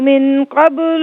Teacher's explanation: اولا یذکر الانسان انا خلقناه من قبل ولم یک شیئا. دیکھیں من پہ نون ساکن ہے تو یہاں پر اخفا کیا جائے گا کیونکہ اس کے بعد قاف حرف اخفا آ رہا ہے.